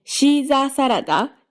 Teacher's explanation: you go low, high, high, high, high, low, low. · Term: downstep